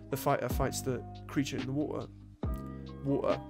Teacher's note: you're dropping the T entirely, and that gets a lot closer to Cockney